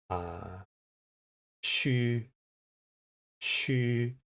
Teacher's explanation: The second sound is the vowel, which is a front rounded vowel. Now, front rounded vowel just means if I go e, so I make an e sound and I just move my lips to a circle.